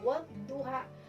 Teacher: wadduha di sini ada alif lamnya, tapi alif lamnya tidak terbaca kalau penulisannya. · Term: alif lam syamsiyah